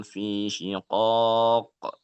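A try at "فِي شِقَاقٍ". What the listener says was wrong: Syiqaq. Agak panjang sedikit. Sebenarnya itu mad alif disukunnya tidak masalah 2, 4 atau 6.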